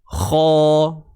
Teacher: Pangkal lidah akan ni hujung lidah, ni pangkal lidah. Bila kita sebut kha, pangkal lidah ni mesti akan menaik. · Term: isti'ala